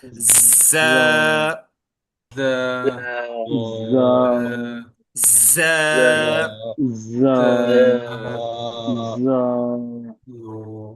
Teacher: جب زا پڑھیں گے تو دونوں دانت ایک دوسرے کو پریس کر کے بولے گا، تھوڑی سی سختی کے ساتھ